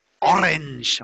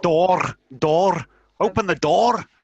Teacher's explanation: if you go to the north of England and even Scotland, you get a very, very strong controlled R.